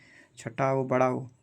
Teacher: छोटा ऊ बड़ा ऊ ओष्ठ से बोले जाते हैं